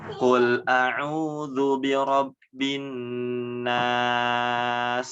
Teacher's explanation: si huruf sin ini ketika berharakat sukun atau ketika menjadi sukun itu menjadi tajam suaranya ya, sehingga mengeluarkan bunyi desis